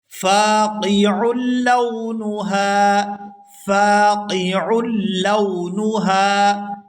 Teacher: یہاں عین کو لام مشدد کے ساتھ ملائیں گے